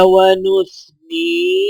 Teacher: نون کو یا کے ساتھ ملاتے ہوئے ایک الف کے برابر کھینچ کر پڑھا جائے گا